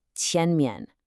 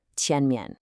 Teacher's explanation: the second syllable, mian, usually gets a neutral tone here, so it's very light. The real emphasis is on that first syllable